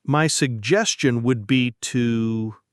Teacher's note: The stress is on suggestion.